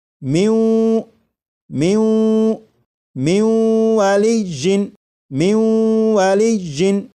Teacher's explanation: نون ساکن کو واو میں ادغام کریں گے، ملا کر پڑھیں گے اور غنہ کر کے پڑھیں گے